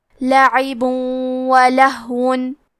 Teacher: ادغام کا معنی ہے حرف کو حرف میں داخل کرنا تو ہم تنوین کو واو میں ملا کے غنہ اور تشدید کے ساتھ یہ حکم کو ادا کریں گے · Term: ادغام بغنہ